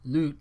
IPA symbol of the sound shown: lü̱'